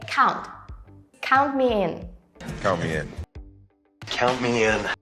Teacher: the T in count isn't fully pronounced